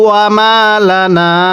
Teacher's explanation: এই নুনের মধ্যে আমরা কয়ালিফ টান দিব।